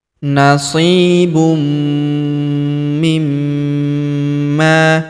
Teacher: Nasib tanwin un huruf bunu huruf mi berharakat tasydid maka tanwin unnya melebur ke huruf mi yang berharakat tasydid. kita tahan dan kita tekan serta kita dengungkan dua sampai 3 harakat. · Huruf ma kita tahan dan kita tekan serta kita dengungkan dua sampai harakat karena terdapat tanda tasdid di atasnya. Lalu kita panjangkan dua harakat karena alif di depannya.